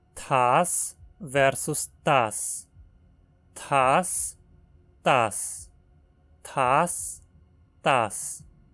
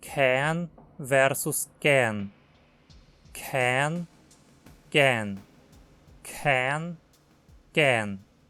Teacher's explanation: o contraste entre consoantes fortes e fracas não é feito por vozeamento, mas por aspiração. Consoantes fortes são aspiradas, o que quer dizer que soltam muito ar na pronúncia, como se fossem seguidas por um H.